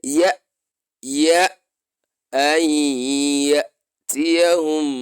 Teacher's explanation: when you pronounce Hamza correctly, there's going to be a kind of stopping or a kind of gap before you move to the next alphabet. You can't just join. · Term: a little stop